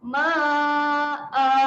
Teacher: kita kena panjangkan bunyi hamzah tu sebanyak 2 harakat